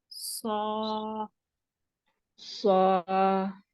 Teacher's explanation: lift the back and take the front to the makhraj of sad. So there's a dip in the middle. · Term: heavy letter